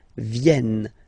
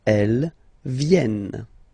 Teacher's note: this classic ending ent for the third person of the plural is here, but phonetically it doesn't exist, so you don't pronounce it